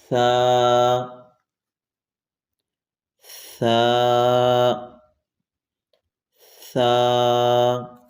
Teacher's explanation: ثا کو بغیر سیٹی کے پڑھیں گے۔ دانتوں کو بند کیا تو سیٹی نکلے گی۔